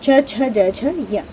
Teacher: च छ ज झ य, इसका उच्चारण स्थान तालु है, और ये इसीलिए ये वर्ण तालव्य कहे जाते हैं